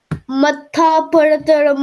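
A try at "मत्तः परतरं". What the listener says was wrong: So can you pronounce it matta instead of matha? Not matha. It's not matha. Okay, it's matta.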